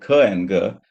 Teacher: അപ്പൊ ഇത് നമ്മൾ ഖ ഗ ശബ്ദങ്ങൾ പറയുമ്പോൾ when you articulate ഖ and ഗ, this is what happens. Your back of the tongue creates a stricture here, a blockage, a complete blockage, and then a sudden release.